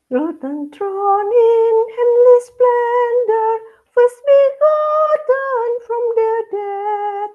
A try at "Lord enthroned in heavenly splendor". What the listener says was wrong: Lord N-nya jelek tapi. Setelah throne ke belakang bagus. Lord N-nya jelek. Awalnya nggak boleh jelek. Harus bagus. Lord enthroned. Lord enthroned.